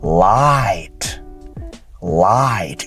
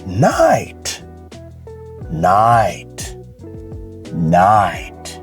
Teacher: The A transitions to an I, creating the I sound. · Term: diphthongs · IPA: /aɪ/